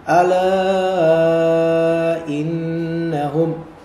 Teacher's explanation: asli dua harakat, tapi karena setelah alif itu ternyata ada hamzah qata. Ada hamzah qata. Maka dia menjadi 4, 2, 4 atau 5 harokat. Menjadi mad jaiz munfasil.